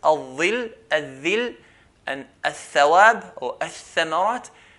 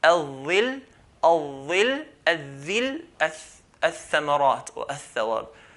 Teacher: The tip of the tongue touches the bottom edges of the front two teeth. Imagine the front two teeth, the incisors here, tip of the tongue touches the edge of the incisor.